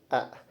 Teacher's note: Hamzah itu makhrajnya termasuk hinjiri, yaitu tenggorokan. Kemudian dalam pengeluaran udaranya dia masuk infijari, yaitu adanya letupan ketika diucapkan. Kemudian dari pita suara dia itu mahmus, yaitu adanya getaran.